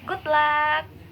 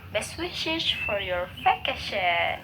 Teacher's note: These are normally spoken with a falling tone.